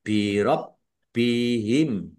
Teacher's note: Birob bihim, ya dilun, baknya dibaca double, ada tasdidnya, ditekan biar tampak doublenya, ya. Birob bihim.